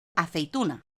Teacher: Decreciente, cuando la vocal abierta precede a la cerrada · Como en la segunda sílaba de la palabra aceituna hay 2 vocales, E e I, primero una abierta y luego una cerrada, decimos que esto es un diptongo decreciente.